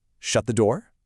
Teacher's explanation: Shut the door? See, that little rise at the end instantly makes it sound like a question